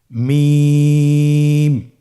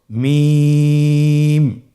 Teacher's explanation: হরফটি উচ্চারিত হয় দুই ঠোট চেপে ধরে